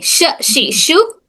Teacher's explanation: जबान का दरमियानी हिस्सा और तालु के दरमियानी हिस्से से अदा होता है। जब हम जबान के दरमियानी हिस्से को तालु के दरमियानी हिस्से से लगाते हैं तब शीन की आवाज अदा होती है।